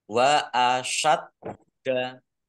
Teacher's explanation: dalnya dibaca dobel ada tasdidnya biar tampak dobel maka ditekan